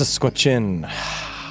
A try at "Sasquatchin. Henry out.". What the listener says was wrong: But you're blowing. But you're breathing in when you're saying out and breathing out when you're saying